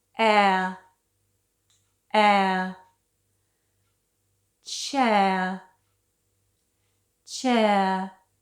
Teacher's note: the sound air is made up of the sound e and a.